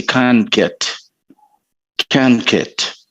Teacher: the t sound disappears